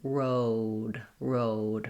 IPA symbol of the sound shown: oʊ